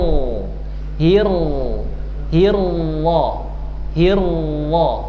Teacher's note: thful lisan atau ujung lidah bukan bibir. Jadi yang menebalkan suara ro adalah pangkal lidah bukan bibir. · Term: huruf ro